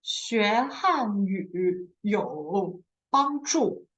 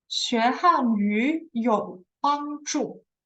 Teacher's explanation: the first third tone will always change to the second tone